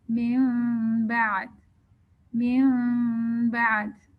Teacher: नून साकिन के बाद फिर बा आ रहा है, तो हम नून की हद तक तो गुन्ना करेंगे, मिन बाद, मिन बाद।